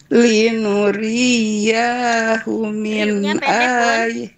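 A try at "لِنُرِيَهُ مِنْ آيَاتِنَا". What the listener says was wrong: Ri-nya pendek. Linuriyahu min ayatina.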